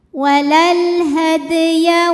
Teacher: qalqalah sugro karena sukunnya asli yaitu huruf dal ya. Dibacanya mantul pantulannya kecil.